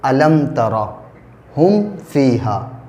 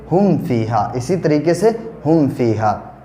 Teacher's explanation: غنہ نہیں کریں گے، بغیر غننے کے جلدی ادا کریں گے، اور اس کو اظہار شفوی کہتے ہیں